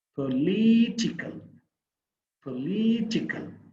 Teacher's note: not political as a noun the first syllable is stress reasonable as an adjective political the second syllable is the stressed one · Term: stressed syllable